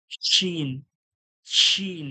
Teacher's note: জিভের মাঝখান এবং ওর সোজাসুজি তালু থেকে হালকা চেপে আওয়াজ বের করতে হবে। হাওয়ার মতো চেপে বার করতে হবে।